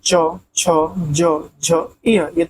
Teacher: च वर्ग के अंतर्गत आता है च, छ, ज, झ, य तालु से उच्चारित होता है